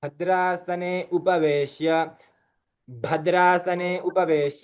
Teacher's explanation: भद्रासने भकार तो महाप्राण है उच्चारण में अल्पप्राण सुनाई देता है भद्रासने उपवेश भद्रासने उपवेश